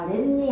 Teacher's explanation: 근데 뒤에 니은으로 시작하는 말에서 아래니가 아니라 아랫니 하고 니은이 덧나